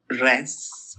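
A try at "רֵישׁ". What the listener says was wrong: Resh. Gotta get the little trill there. Resh. The fun little trill on the R. Very Hebrew, got a trill.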